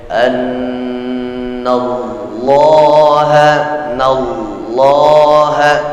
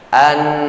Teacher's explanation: Tahan bacaan pada proses gunnahnya. Di mana pangkal ukuran makhrajul hurufnya? Di pangkal hidung. Dalam bahasa Arabnya disebut khayshum, pangkal hidung, ya, sehingga bunyi dengungnya jelas terdengar, nyata di kuping orang yang mendengar bacaan kita.